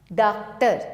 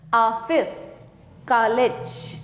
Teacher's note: यह आ तथा ओ के बीच की ध्वनि है